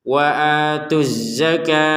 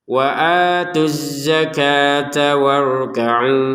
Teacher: huruf ta ini berubah menjadi terbacanya ha kenapa karena kita berhenti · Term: huruf ha